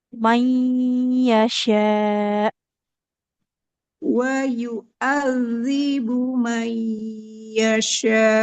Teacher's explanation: Yasya itu juga sama nun sukun bertemu ya satu hukum bacaan idgam biguna